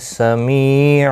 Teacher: سمی می یا مدہ ہے، ایک الف کی مقدار کے برابر کھینچ کر پڑھیں گے